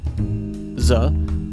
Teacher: a voiced alveolar fricative